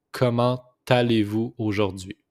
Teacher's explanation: Just make the liaison here, comment allez-vous? It's the T with the A, so it's pronounced comment allez-vous aujourd'hui?